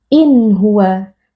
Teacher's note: nun sukun dibaca dengan jelas tanpa ada dengung tambahan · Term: izhar halqi